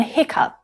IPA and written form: ˈhɪk.ʌp (hiccough)